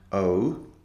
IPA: əʊ